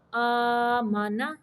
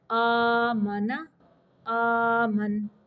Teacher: تو حمزہ کھڑی زبر آ، میم زبر ما، آما، کھڑی کو لمبا کرنا ہے، آما، نون زبر نا، آمانا، زبروں کو لمبا بالکل نہیں کرنا